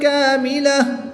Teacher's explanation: گول تا کو وقف میں ساکن کر دیں گے